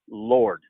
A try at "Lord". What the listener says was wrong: So you want to pronounce it Lorda. That's very close. You just need just a little bit more of the A. Lord.